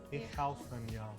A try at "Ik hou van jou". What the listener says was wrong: No, not German. IK. It's with a K. Not with a G. No. Ik, yeah.